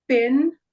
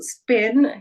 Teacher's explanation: you feel that puff of air come out of your mouth that's what makes it aspirated as compared to spin where you don't feel it